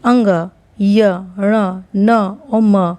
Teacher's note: अंग यण न म का उच्चारण स्थान स्ववर्गीय स्थान, स्ववर्गीय मतलब अपने ही वर्ग के स्थान और नासिका से किया जाता है। ये नासिका से इसका उच्चारण किया जाता है। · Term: पंचम वर्ण